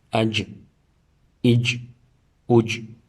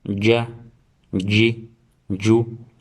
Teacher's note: So there's no tip of the tongue involved in the letter jim. The center part should rise up and touch the palate.